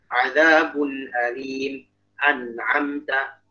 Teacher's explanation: Tapi karena kita terlalu nahan, jadi ketahan beneran. Jadi jangan seakan-akan ada tahan ada saktanya. Jadi kayak jangan sampai amta.